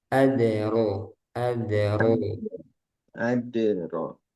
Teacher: dalnya jangan ada udara